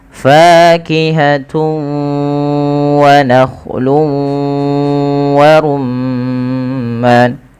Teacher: Cara membacanya yaitu memasukkan tanwinnya kepada huruf wau. Karena idgham itu artinya memasukkan bighunnaah disertai dengan ghunah. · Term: idgham bighunah, idgham bi gunnah